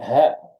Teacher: hurufnya di paling ujung di tenggorokan ini